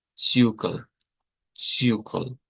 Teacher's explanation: Pero esta destaca también por tener una letra Z en la escritura que se pronuncia con el africado TS